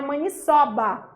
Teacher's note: Não tem acento, mas o timbre é aberto, tá?